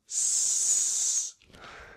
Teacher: There is no vibration from my vocal cords, and we make the sound with our tongue at the roof of our mouth. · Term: s sound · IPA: /s/